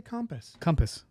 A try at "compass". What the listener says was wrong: You're pronouncing the A.